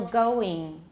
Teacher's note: You may have noticed that the vowel in the English ing ending sounds more like E. So for example, going, it's not going.